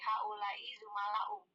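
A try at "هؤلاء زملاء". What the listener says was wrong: Iya, haulai zumalau. Nggak pakai doma, nggak pakai ini ya, nggak pakai wau ya. Wau itu muncul kalau diapakan ibu-ibu? Diidofah, diidofahkan. Nah, yang diidofahkan itu ya domir ya. Kalau dia diidofahkan ya. Ya, kalau dikasih domir doang, domir ya gitu enggak. Jadi kalau misalkan polosan begini, maka haulai zumalau. Ya tetap haulai fuqara'u begitu.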